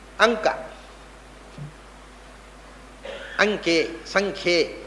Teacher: ಮುಂದೆ ಕವರ್ಗ ಇದ್ದರೆ ಆ ಕವರ್ಗ ವರ್ಗದ ಕೊನೆಯ ಅಕ್ಷರ ಆಗುತ್ತೆ ಅನುಸ್ವಾರ ಅಂದ್ರೆ ಗಾರ ಆಗುತ್ತೆ ಅದರಿಂದ ಅಂಕೆ ಅನ್ನುವಲ್ಲಿ ಆ ಗಂ ಕೆ ಅಂಗಕ್ಕೆ